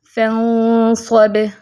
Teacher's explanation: اخفا بھی موٹا ہوگا، ٹھیک ہے، ہیوی اخفا ہوگا کیونکہ آگے صاد آ گیا ہے